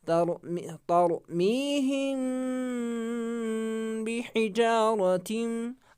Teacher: यानी मीम को थोड़ा खींचेंगे भी और मीम की आवाज़ नाक में छुपाएंगे भी और मुंह में भी छुपाएंगे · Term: इख्फा